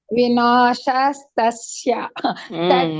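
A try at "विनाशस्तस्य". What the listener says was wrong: correct ಬಂತು ನೋಡಿ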